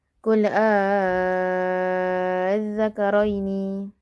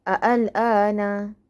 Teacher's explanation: Kalimah-kalimah berikut ada dua cara bacaan. Yang pertama ialah ibdalkan dengan alif dengan kadar 6 harakat dan yang kedua ialah tashilkan di antara hamzah dan alif dengan kadar 2 harakat.